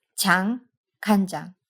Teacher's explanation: That gave us 간장, soy sauce, where that N at the end of the first syllable turned our unvoiced ch into j